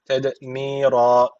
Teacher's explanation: D harfi cezim almış. Kalkale tecviti var. Birazcık vurguluyoruz.